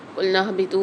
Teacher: قُلْنَا اهْبِطُوا میں دیکھیے نون کو ہا کے ساتھ ملانا ہے ہم نے، اس کو نون کو کھینچیں گے نہیں، الف مد آ رہا ہے لیکن یہاں پر ہا کے ساتھ اس کو ملا کر پڑھیں گے۔